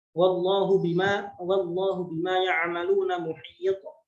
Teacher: Jadi ada pantulan ketika kita mensukunkan huruf ta. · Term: qalqalah